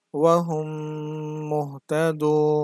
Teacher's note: মিম সাকিনের পরে মিম আসছে এজন্য গুন্নাহ করতে হবে অর্থাৎ বানান করার পরে হুম বলে ধরে রাখতে হবে